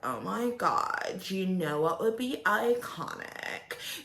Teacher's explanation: she has vocal fry that drives me insane